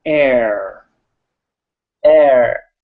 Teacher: on that right now okay so we have air very simple got an r in it but it's at the end and it's kind of light